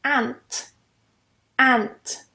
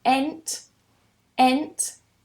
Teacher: Very open and very short as well. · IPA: /æ/